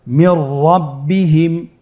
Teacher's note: নুন সাকিনের পরে যদি র হরফ আসে তাহলে নুন সাকিনকে পরবর্তী হরফের সাথে মিলিয়ে গুন্না ছাড়া পড়তে হবে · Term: ইদগামে বিলা গুন্না